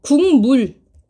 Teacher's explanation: 같다 이거예요. 기억도 연구개음, 이응도 연구개음이죠. 지금 뭐만 바뀌었어요? 소리 내는 방법만 바뀌었다. 파열음에서 비음으로, 그죠? 요런 식으로 계속 나타나게 됩니다. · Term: 비음화